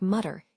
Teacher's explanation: the final R in words like mutter is usually pronounced softly, almost like an English uh